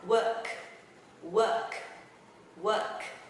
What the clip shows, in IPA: wɜːrk